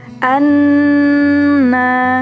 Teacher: Kotak berwarna hijau menunjukkan ilmu tajwid yang disebut ghunah musyadah atau wajibul ghunah, yaitu hukum tajwid di mana terdapat huruf nun dan mim yang bertasydid. Cara membacanya adalah dengan mendengungkan secara nyata ke pangkal hidung